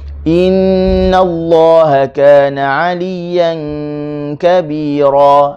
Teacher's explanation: pastikan inna ni kita sebut dengan i. Jangan baca e, tak boleh, kena baca dengan i.